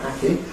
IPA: ˈhæki